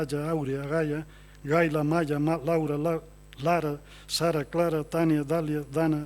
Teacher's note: hai unha repetición da vogal A, que é a vogal central de abertura máxima